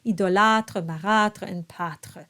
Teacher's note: in spoken French, in many, many regions, that darker sound has actually slipped away and it has migrated towards the ah sound. So you might hear francophones speaking and you won't be able to distinguish between the two.